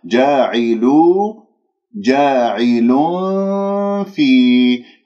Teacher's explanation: جاعلوا جاعل في، هكذا كما تلاحظون أنه نزلت عندي الثنايا العليا قريبة من باطن الشفة السفلى حيث مخرج الفاء، ولا أطبق الشفاه حتى لا أخنق الغنة ولا أجعلها كأنها ميم، أقول جاعل في، هكذا خطأ، فانتبهوا بارك الله فيكم. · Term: إخفاء